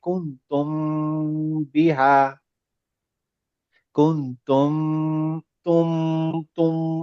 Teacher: হ্যাঁ, বা থাকবে, এই এই প্রথম শব্দটাতে হচ্ছে কুনতুম, তার পরের শব্দে যদি বি বা দিয়ে শুরু হয়, তখন এই মিমটা হাইড হয়ে যাবে, বাটা আমরা পড়বো, তাহলে কুনতুম বিহা, কুনতুম তুম তুম। এটা আমার নাকের ভিতর থেকে গুন্না সাউন্ড আসতেছে